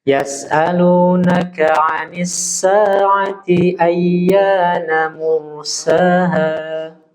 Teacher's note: Ada dua kesalahan di kalimat Anis sa'ati. T-nya jangan dipanjangkan tuh.